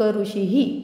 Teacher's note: विसर्ग नेहमी स्वरानंतर येतो. पंक्तीच्या शेवटी येणाऱ्या विसर्गाचे उच्चारण ह सारखे केले जाते. स्वरानुसार ते विसर्ग ह हु हे मध्ये परावर्तित होतात.